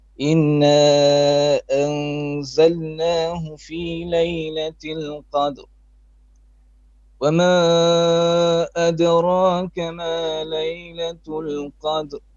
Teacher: You have a slight nasalization throughout.